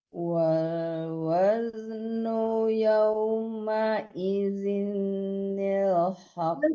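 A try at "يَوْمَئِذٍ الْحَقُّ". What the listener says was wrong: Nggak boleh ditasdidkan nun kecilnya, nggak ada tasdid ya. Yauma idzinil haqq. Kenapa masih ditekankan nun kecil? Jangan yauma idzin ya, yauma idzinil haqq. Di qafnya baru ditahan. Nah, ibu kan bacanya yauma idzin. Jangan ditekankan nun itu, nunnya tidak tasdid. Yauma idzinil haqq.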